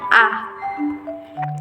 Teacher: vokal yang diucapkan dengan bentuk bibir tidak bulat dengan tidak melebar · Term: vokal Netral